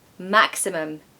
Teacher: this word has three syllables and of course the first syllable is stressed